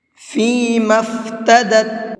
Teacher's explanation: میم کو ڈائریکٹ فا میں ملائیں گے، اور یہ بیچ میں جو 2 الف ہیں ان دونوں الف کو نہیں پڑھا جائے گا